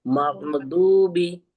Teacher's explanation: जबान की करवट को हम बाईं या दाईं तरफ की ऊपर की दाढ़ों के मसूड़ों से लगाएंगे और दाद की अदायगी करेंगे